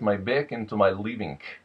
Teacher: the NG tends to have a k sound at the end of it